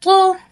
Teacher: अब त मुखम होता है मोटा होता है